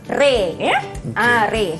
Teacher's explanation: imalah ni dia bunyi pertengahan antara bunyi fathah yang baris atas tadi dengan bunyi kasrah. Dia bunyi dia antara atas dengan bawah i.